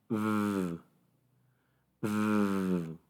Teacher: toca tu garganta cuando haces el sonido v, v. Se siente vibración. Por lo tanto, el verbo en pasado se pronuncia loved, loved. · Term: voiced sounds